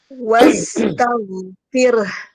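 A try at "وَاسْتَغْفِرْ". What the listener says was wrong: Fir tipis. Fir. Enggak fir. Fir tebal. Fir. Cara menipiskan ini bisa ditarik sempurna ke sampingnya. Fir. Tarik sempurna ke samping. Fir. Baru huruf H.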